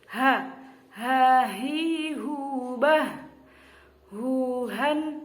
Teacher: huruf H ini makhrajnya yaitu ada di pangkal tenggorokan. Jadi ini termasuk huruf izhar, jadi harus jelas, mangap, dan tidak boleh ada desis atau ada dengung.